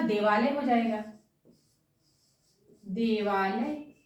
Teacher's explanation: तो दोनों ह्रस्व स्वर का आ और दीर्घ स्वर का आ दोनों मिल करके दीर्घ आ का निर्माण करेंगे